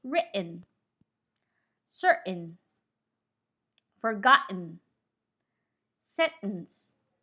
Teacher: if you have an n immediately after the letter t you don't pop the letter t the tongue is in the t position but you release the air for the letter n and not the letter t make sure you don't put a schwa before the letter n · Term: the T is held